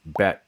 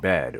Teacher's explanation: voicing contrast, the difference between a T and a D is associated with a difference in preceding vowel length in English